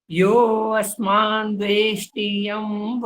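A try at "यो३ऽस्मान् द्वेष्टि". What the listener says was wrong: लगभग ठीक है यो असमान अ की आवाज नहीं आनी चाहिए जी यो समान ऐसा बोलना है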